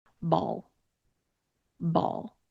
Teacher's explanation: I have my lips in a very neutral position, and my tongue is reaching just the very, very back of my teeth when I'm ending on that L sound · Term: dark L sound